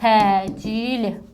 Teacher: Burada bizim vurğumuz hardadır? Vurğu sondadır. Uzanma hardadır? Uzanma ikinci hecadadır. Baxın, sait uzanıb.